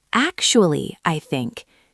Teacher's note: You start the sentence high and loud and then you drop down. >> So instead of a flatline, it's a curve. · I think you hit the first word hard. This shocks the airwaves and grabs attention. Once you have the eyes on you, you can lower your volume to a normal conversational level. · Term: volume spike